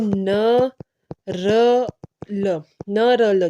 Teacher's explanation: वसर व्यंजन होते है जिनकी जीव मसूड़ों को टच करती है स्पर्श करती है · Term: वत्स व्यंजन, वत्सर्य व्यंजन